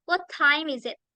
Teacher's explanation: The letter T in the word what is silent. Jadi huruf T di dalam kata what itu seperti diam atau hilang, seperti dihilangkan.